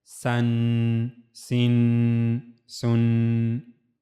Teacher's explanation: Means whenever we have to read a letter having double fatha, double kasra, and double dhamma, so at the end we have to make a nasal sound that is called ghunna